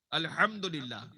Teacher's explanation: بیچ حلق سے ہا نکلنی چاہیے، تبھی یہ قرآن کا مخرج کا حق ادا ہوگا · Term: بڑی ہا